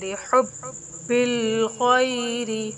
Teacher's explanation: با مشدد لیٹر ہے، اس کے اوپر تشدید کا سائن ہے، تو اس کو ذرا رک کر پھر پڑھیں گے۔